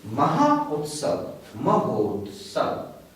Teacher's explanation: Долгий А плюс У образует О.